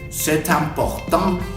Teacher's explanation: ahí sí vas a pegar la T con la vocal que empieza en la siguiente palabra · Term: la liación